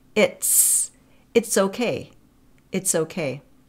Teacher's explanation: we kind of pronounce that t, final t, and then we release it into the fricative s.